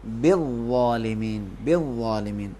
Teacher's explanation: ظالمین میں زے سے نہیں پڑھیں گے، زوئیں تلفظ کریں گے. زوئن کو عربی میں ادا کرتے وقت زبان تھوڑی سی باہر آئے گا، وہ موٹا کر کے